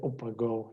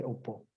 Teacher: You delete not only the A, but you also delete the G of that possessive suffix.